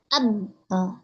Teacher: Ternyata dua bibir kita, dua alat ucap kita itu saling berbenturan, gitu. Bibir atas dengan bawah, ya.